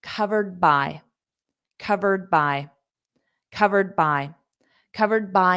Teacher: So notice covered by. So I close my mouth for that D, covered. And then when I open my mouth, I say the next sound, which is B, by. · So instead of saying covered, which I would say if I'm just saying the word, when you say it in a sentence, you're not going to pronounce that D at the end.